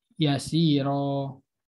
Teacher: bacanya masih mencucu walaupun masuk ke hukum tarkik